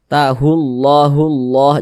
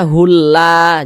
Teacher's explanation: lafaz Allahnya dibaca tebal tahullah hullah Jangan dibaca hulla jangan nah dibaca tebal hullah begitu · huruf lam jalalah ini dibaca tebal dibaca tabkhim